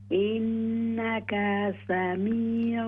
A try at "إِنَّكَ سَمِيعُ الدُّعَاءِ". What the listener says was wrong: إنك سميع الدعاء. काफ जबर का, इस जबर को लंबा न करें.